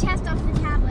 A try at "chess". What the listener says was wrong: It's chess, not chest. It's chess.